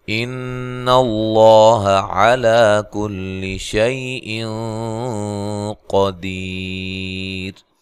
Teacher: لفظ اللہ کو موٹا ادا کرنا ہے، اس سے پہلے حرف پر زبر ہے